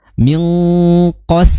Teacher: Kemudian sin di situ qas langsung tipis ya. Setelah qof mengucapkan huruf yang tebal langsung jatuh tipis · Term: sinnya tipis